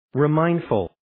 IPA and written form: riː'maɪndfʊl (Remindful)